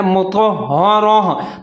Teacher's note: وقف کرنا ہے تو اس کو آپ نے پڑھنا ہے مطہرہ، تا کو ہا کی آواز میں تبدیل کر دینا